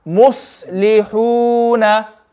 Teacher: sad has a quality known as safir, which is a whistling sound. So when we say sad, if we're not making that whistling sound, then we're not reading the quality, we're not reading it properly.